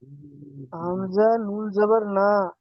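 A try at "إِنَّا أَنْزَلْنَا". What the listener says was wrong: হামজা নুন জবর, হামজা নুন জবর না হয় না, হামজা নুন জবর আন।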